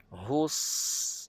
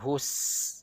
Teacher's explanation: yang menebalkan bunyi huruf Bukan Kerana muncungnya bibir kita tadi tetapi kerana peranan lidah di dalam mulut kita iaitu pangkal lidah terangkat itu yang menyebabkan bunyi itu jadi tebal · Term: bunyi sad